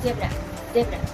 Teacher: Membentuk celah sempit, udara mengalir melalui celah ini, menghasilkan suara yang bergetar. Getaran pita suara juga ikut berperan dalam menghasilkan suara Z. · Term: spiran lidah gigi